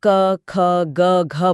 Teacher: क बोलते समय हथेली पर हवा का बहुत हल्का सा स्पर्श होगा। यह अल्पप्राण है यानी कम हवा।